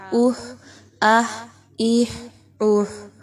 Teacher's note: حروف حلقی میں سے ہے، وسط حلق، حلق کے سینٹر میں سے آپ نے نکالنا ہے بہت سافٹ انداز میں